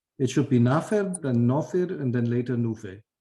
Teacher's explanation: Regular sound change. Long A becomes O, becomes U after N and M.